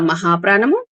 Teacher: థ మహాప్రాణము తర్వాత విసర్గ ఉంది అంటే స ముందు విసర్గ కాబట్టి ననాథస్ ననాథస్ అని రావాలి